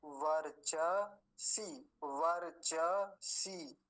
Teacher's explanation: दीर्घ ईकार है, बड़ी ई की मात्रा, तो लंबा खींचेंगे थोड़ा सा, चकार को पूरा रखेंगे, ब्रह्म वर्चसी, वर्चसी, ऐसे।